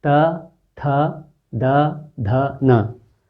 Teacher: दांत का सिरा और जीभ का सिरा स्पर्श हो रहा है।